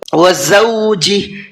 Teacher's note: زا کا ساؤنڈ اور جیم کا ساؤنڈ دونوں الگ الگ ہوتے ہیں، زا میں ہلکی سی سیٹی ہوتی ہے